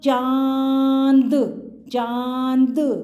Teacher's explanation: पहले हमने चा बोला फिर हमारे मुंह से और नाक से साउंड आई · अब क्या हुआ, मैंने अभी आपको जस्ट बताया था कि आँख, एक तो अगर अनुसार हमारी मात्रा आ स्वर की मात्रा है और हमारे मुंह से हमारा ओपन माउथ भी जा रहा है और नोज से भी, नाक से भी साउंड आ रही है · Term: चंदा की बिंदी, अनुनासिक की मात्रा, चंद्र बिंदु